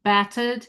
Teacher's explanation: So in front of that double t, it's still an ah.